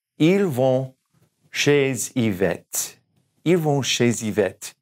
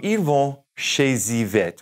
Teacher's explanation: We're going to carry that Z over through the Y.